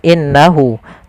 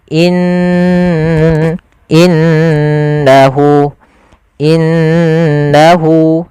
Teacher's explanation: ditahan dulu gunahnya dimasukkan ke rongga hidung kita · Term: gunnah